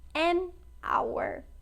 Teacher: Hour começa com H, mas não é pronunciado hour, por isso a gente diz an hour